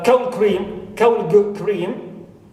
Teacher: Like in cold cream. So da here in cold becomes ga because it's followed and influenced by the vela ka